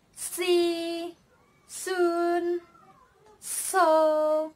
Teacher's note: These sounds are produced when the tip of tongue touches or almost touches the alveolar ridge or the tooth ridge.